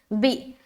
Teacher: بی میں جھٹکا کریں گے کیونکہ حمزہ ساکینہ آ گیا